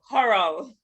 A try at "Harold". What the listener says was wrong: Harold. You're kind of overpronouncing Harold. Harold. I'm not hearing the last sound.